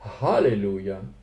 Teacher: Vous avez un H aspiré et pas un H gutturalisé.